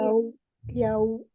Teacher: wau sukunnya disempurnakan dengan memajukan kedua bibir